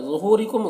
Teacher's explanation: ورا میں را کو پر پڑھیں گے اور یہاں پر مد متصل سے 3-4 الف کے برابر کھینچ کر پڑھیں گے۔ ظہورکم، ظا کو پر پڑھیں گے، یہ حروف مستعلیہ میں سے ہے